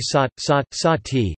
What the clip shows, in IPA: saːt